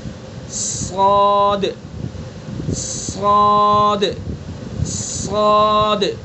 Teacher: صاد کے اندر صفت استعلا یعنی بلند والی صفت ہے، تو پر کر کے منہ بھر کے پڑھیں گے